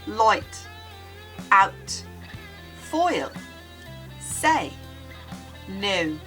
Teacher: You start with one vowel and then slide into another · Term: diphthong